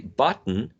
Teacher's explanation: When you say button, that is a glottal stop, so the airflow is blocked in the glottis area.